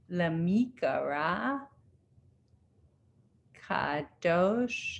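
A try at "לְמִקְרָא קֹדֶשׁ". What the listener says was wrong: No, lemikra a. Lemikra a. There's that double one under there. Ko. Dash.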